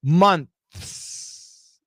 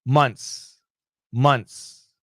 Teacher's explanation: when Americans say it fast, the TH is gone